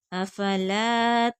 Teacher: لام کو کھینچ کر پڑھیں گے، آگے خالی الف ہے